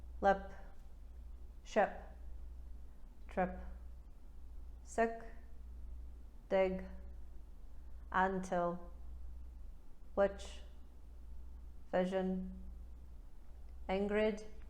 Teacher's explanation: anytime the vowel sound occurs in American English, a New Zealander will turn it into schwa